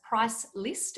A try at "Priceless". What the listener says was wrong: Priceless, like no price. Priceless. Not list, with a T at the end, not that.